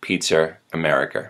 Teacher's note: when there's an open vowel at the end of a word, an R gets tacked onto it